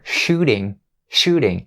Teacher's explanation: We turn the T sound into a flap D sound and we have shooting instead of shooting.